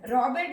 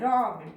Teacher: voiced consonants में ईडी के जगह में रॉबेड नहीं बोलना है, रॉब्ड, ड का उच्चारण होगा